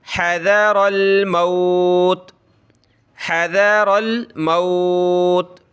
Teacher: हज़रल, रा को मोटा करें ज़बर की वजह से, हज़रल मौत, इसको मौत न पढ़ें, मीम वाव ज़बर मो नहीं, मीम वाव ज़बर मऊ